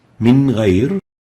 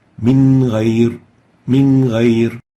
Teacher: Nun Sakinah followed by Ghain, pronouncing the Noon without exaggerating the gunnah and without إخفاء, clearly exposing the Noon.